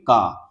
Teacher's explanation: जब का बोलेंगे तो पहले जीभ ऊपर आएगा फिर थोड़ा सा रुकेगा। फिर अचानक से हवा निकलेगा। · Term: स्पर्श व्यंजन